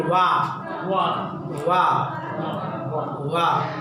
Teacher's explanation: पहले जिह्वा जो है वो क्या करती है, दांत को टच करती है, फिर उसके बाद दोनों एक दूसरे को टच करता है। वाह वाह, जिह्वा दांत को टच कर रही है, खासतौर से नीचे वाले दांत को, उसके बाद दोनों ओठ क्या कर रहे हैं, टच कर रहे हैं, ठीक है। तो ये वकारस्य दंतोष्ठो हो गया।